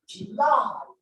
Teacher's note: the primary stress is on the second syllable